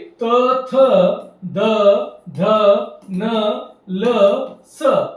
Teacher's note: जिभेचा शेंडा दाताच्या मागच्या बाजूस जाऊन जर लागत असेल तर त्याला म्हणायचं आहे दंत्य वर्ण. म्हणजे ज्या वर्णांचा उच्चार करताना दाताचा उपयोग करावा लागतो, जिभेचा शेंडा दाताला जाऊन पाठीमागे लागतो, त्याला म्हणायचं आहे दंत्य वर्ण.